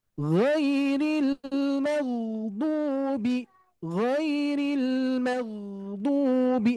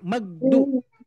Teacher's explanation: Huruf ghain termasuk huruf yang rohwah, mengalirnya suara. Tapi di sini tidak mengalir udara.